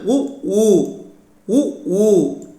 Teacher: இதழ்களை குவிப்பதால் பிறக்கும் உயிரெழுத்துக்கள்